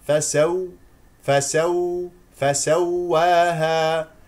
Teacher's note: هذه الواو مشدده اسمع الواو الساكنه